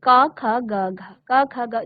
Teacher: जब क वर्ग का आप उच्चारण करते हो तो आपके कंठ से आवाज आती है, उच्चारण का जो स्थान है वो कंठ है।